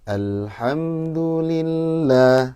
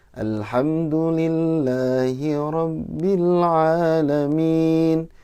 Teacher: Kalau yang pertama, model pertama kan nadanya seperti jatuh.